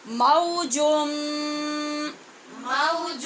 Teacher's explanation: نون تنوین جو جیم کے اوپر تنوین ہے اس کے آگے میم ہے، لہٰذا غنے کے ساتھ ادغام ہوگا